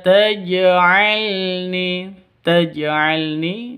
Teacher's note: ni panjangnya dua ketukan karena ada ya sakin yang didahului dengan kasrah, Mad Asli atau Mad Thabi'i.